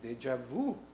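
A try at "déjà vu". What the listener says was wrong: Aren't you supposed to pronounce it deja vu? Isn't the J silent in, or isn't it more like a deja vu?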